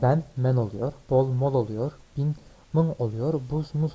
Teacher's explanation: bazı Türkçe sözlerin başında B sesi M sesine dönüşmüştür